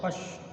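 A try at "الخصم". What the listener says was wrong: Iya, khasm. Amnya bunyi khasm.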